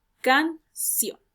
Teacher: Can, sílaba átona, y sion, la sílaba tónica. Como la mayor entonación de voz recae en la última sílaba, estamos hablando de una palabra aguda.